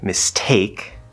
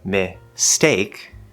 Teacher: this is one of the strange things about the s sound is it tends to soften the stop sounds after it